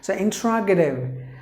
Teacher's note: But if it is an American pronunciation, the T is pronounced like a D because it is in between the vowels